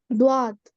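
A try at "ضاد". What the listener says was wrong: টেনে বলতে হবে একটু। দোয়া না বলে আর একটু অধ্বনি দদ।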